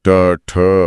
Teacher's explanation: इन वर्णों की सबसे बड़ी खासियत यह है कि इन्हें बोलने के लिए जीभ को पीछे की ओर मुड़ना पड़ता है। यानी जीभ इनवर्टेड हो जाती है। · यानी जीभ इनवर्टेड हो जाती है। ट ठ वाकई जीभ एकदम पीछे की तरफ मुड़ रही है और फिर एक झटके से उस कठोर छत से टकरा कर नीचे आ रही है। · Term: मूर्धन्य ध्वनियों